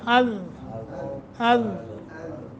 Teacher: ذال از ہمیشہ کسرے کے ساتھ ہو، فتح کے ساتھ ہو یا ضمہ کے ساتھ ہو، زبان کی نوک ثنایا علیہ کی جڑ یہ لگے گا